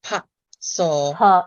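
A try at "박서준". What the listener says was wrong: Seo-joon. Park Seo-joon. I was like, it's not Seo. It's not Seo. It's more like SUH.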